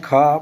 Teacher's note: खा बोलने में थोड़ा आपको ज्यादा वायु की आवश्यकता होती है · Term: महाप्राण